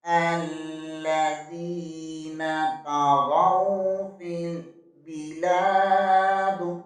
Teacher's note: با زیر کو لام کے ساتھ ملائیں گے، لام زبر کے آگے الف مدہ ہے، اسے ایک الف کے برابر کھینچ کر پڑھیں گے۔ دال کے نیچے زیر ہے، وقت کی صورت میں دال کو ساکن کر دیں گے، یہاں قلقلہ بھی ہوگا۔ · غائن زبر کے آگے واو ساکن ہے، یہاں پر واو لین ہوگا · زال زیر کے بعد یائی مدہ ہے، اسے ایک الف کے برابر کھینچ کر پڑھیں گے